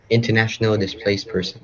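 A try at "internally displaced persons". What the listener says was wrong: No, no, internal, not international. Internally displaced person.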